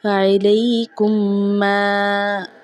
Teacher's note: یہ جو میم ساکن ہے اس کو ہم نے چھپانا نہیں ہے، بغیر گنہ کے اس کی ادائیگی کرنی ہے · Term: اظہار شفوی